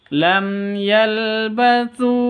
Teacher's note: bacaan izhar syafawi bacanya jelas tanpa dengung